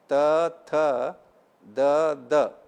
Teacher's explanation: आतां दंतांतल्यान जावचें पळया जीब दंताक लागता पळय खंयची पुराय त थ द द जीब दंताक लागयता.